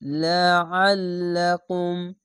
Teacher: আইনটিকে মোটা করে গলা চিপে পড়বেন